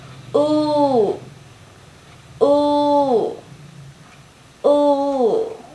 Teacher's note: mình hay quên ở các việc đưa môi ra, mình cứ ư như tiếng Việt như vậy, thì cái môi của mình nó không có tròn, dẫn đến là cái âm cũng không có tròn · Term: âm U dài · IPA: /uː/